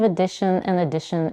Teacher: the first vowel in both words is reduced to a schwa followed by dish and another schwa so you just need to